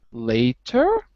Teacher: My voice rises on later. It rises on the 2nd syllable. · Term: go up